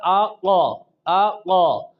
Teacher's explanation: پھر آپ کو مخرج معلوم کرنے کا طریقہ بھی بتایا کہ جس حرف کا مخرج آپ نے معلوم کرنا ہے اس کے شروع پر حمزہ متحرک لے کے آئیں، جیسا کہ یہ قوف ہے، اب اس کا مخرج شروع میں حمزہ متحرک لے کر آئے تو بن گیا آقا آقا۔ اب آپ کی زبان کی جڑ اوپر کے تالو سے ٹکر کھائی ہے تو اس سے یہ قوف ادا ہوتا ہے